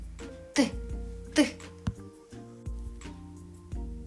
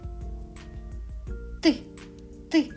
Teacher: Його не можна ні протягнути, ні проспівати. Він ніби вибухає. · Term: звук т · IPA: [т]